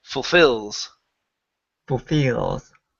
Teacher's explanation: the stress is on the end, and that beginning part is really quick.